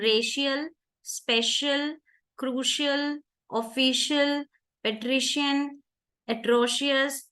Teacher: I is not making the short sound but I is making a schwa lazy sound